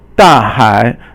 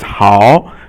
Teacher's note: 好 is third tone, and 处 is silent or 轻 声. So third tone is, remember in Chinese, is 三 声, and it is falling and then rising tone